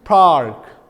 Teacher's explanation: Rhotic accent, if we want to define it, that the consonant r is pronounced in all contexts